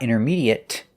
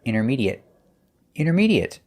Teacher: There's no ate sound, it's short et, intermediate. And it's a stop T.